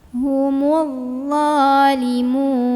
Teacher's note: Kemudian dha hukumnya mad tabi'i karena ada huruf dha yang barisnya fathah berdiri. Cara membunyikannya dipanjangkan 2 harokat.